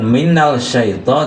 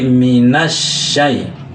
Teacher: Maka bunyi lam sukunnya itu ya tidak dijelaskan, tidak seperti lam Qamariyah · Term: dilebur